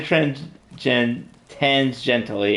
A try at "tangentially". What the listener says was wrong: You did all right. There's just an extra S in there.